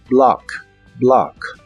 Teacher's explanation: la o de esta palabra se pronuncia como a profunda como si hicieras este sonido en la garganta